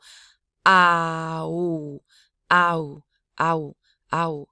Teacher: when you do a diphthong you drop the glottalization on the second